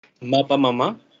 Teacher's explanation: no solamente está siendo reemplazado un fonema segmental por otro, sino también hay un cambio de posición de acento